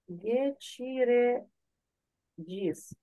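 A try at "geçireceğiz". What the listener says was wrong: Гечіре джес. Тут із, не? Тут джес. Гечі Ріджес. Ось це буде і, а тут буде ес.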